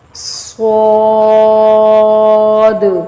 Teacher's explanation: صاد، سیٹی کی آواز نکالتے ہوئے اس کو موٹا کر کے لے کے جانا ہے اور دال کے اینڈ، اس کے اینڈ پہ جو دال ہے اس کو تھوڑا سا ہلا کر کلکلا کر کے پڑھنا ہے۔ صاد، ضاد۔